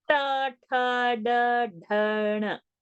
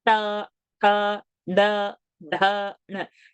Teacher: Each time the tongue is touching the roof of the palate, the hard palate. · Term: retroflex